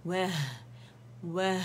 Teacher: ہا کے مخرج پہ جائیں گے, ہمس واضح کریں گے یہاں پہ. وہ وہ ہا باریک ہے, ہا اس کو نہیں پڑھیں گے, باریکی سے ادا ہوگا.